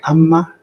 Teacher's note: you have geminate or double or long consonants.